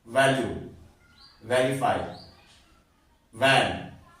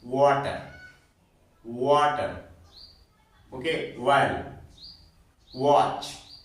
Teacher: जब वी का वा के रूप में उच्चारण करते हैं तो जो हमारे अपर टीथ होते हैं वहां से इसका साउंड निकलता है · जब डब्ल्यू का प्रोनाउंस करते हैं वा के रूप में तो हमारे जो लिप्स है थोड़ा राउंड हो जाते हैं